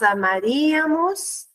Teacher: Com sílaba tônica no ri